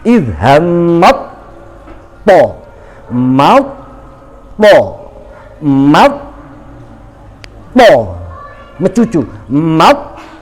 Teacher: Idhammat to, langsung mencucu lisan kita, langsung memposisikan lisan kita di to. To itu kan mencucu, nggih, karena termasuk huruf isti'la, maka mencucu posisi lisan kita.